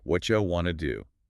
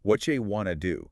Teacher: What do you becomes whatcha, want to becomes wanna, whatcha wanna do. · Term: connected speech